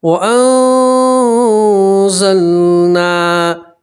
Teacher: میں نے آپ کو اوپر بتایا اخفا کا مطلب ہوتا ہے چھپانا، تو ٹھیک ہے، نون ساکن کی آواز کو آپ ناک میں چھپائیں گے اور ایک الف کے برابر آپ گنہ بھی کریں گے